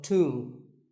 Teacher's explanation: the B is silent and the O is pronounced with an oo sound